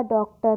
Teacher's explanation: तो जब हम इस ओ को भी बोलेंगे तब भी जो हमारा मुंह का आकार होता है वो कैसा हो जाता है? होठों की आकृति कैसी हो जाती है? वृत्त के समान गोल हो जाती है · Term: आगत स्वर